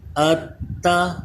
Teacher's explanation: حمزہ تا زبر ات، تا زبر تا، اتا اب دیکھیے یہ تا کے اوپر تشدید ہے، اس تا کو ہم 2 بار پڑھ رہے ہیں۔ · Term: مشدد حرف